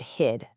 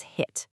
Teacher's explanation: Devoicing a terminal consonant, turning that vibrating duh into a voiceless tu